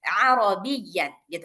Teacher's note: B-nya jangan dipanjangin, tapi ditekan karena yanya tasdid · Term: ya-nya tasydid